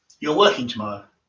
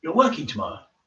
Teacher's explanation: or how they often just say something as a positive statement they indicate is a question by raising the intonation at the end